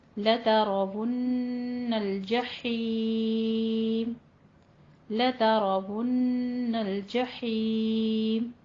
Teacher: لترون را کو پر پڑھیں گے، نون مشدد ہے اس لیے غنہ واجبہ ہے، یہاں پہ 2 حرکتوں برابر اسے لمبا کر کے پڑھنا ہے.